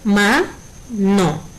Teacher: la sílaba que suena más fuerte con mayor intensidad es ma. Al ser la penúltima sílaba, mano es una palabra grave.